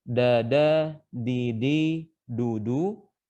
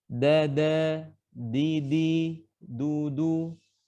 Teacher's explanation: Intinya teorinya adalah ujung lidah bertemu dengan pangkal gigi seri dan bukan langit-langit. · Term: makhraj huruf dal